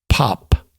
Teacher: the first is a breathier P and the second is a hard stop with a little secondary burst after it